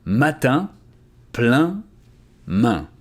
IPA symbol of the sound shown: ɛ̃